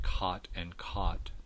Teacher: So traditionally distinct low back vowels, when they're merged in contemporary varieties of American English, they very often merge at the unrounded form, so you very often get cot and caught the same.